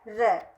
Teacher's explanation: इसके बाद लुंठित या प्रकंपित, जिसे लुंठित या प्रकंपित कह सकते हैं, वह वर्ण होता है र। वर्ण के उच्चारण के समय जीभ टकराकर लुढ़कती या कांपती सी लगती है। र जब हम बोलते हैं या बोलकर देखते हैं तो हम अपने आप महसूस कर सकते हैं कि हमारी जीभ टकराकर लुढ़कती है या कांपती सी लगती है।